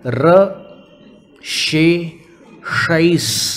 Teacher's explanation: तीनों तालव्य श, मूर्धन्य श और दंत स, तीनों का उच्चारण कर रहे हैं एक साथ।